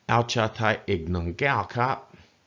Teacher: Flat tone, flat tone, flat tone, low tone, falling tone, and high tone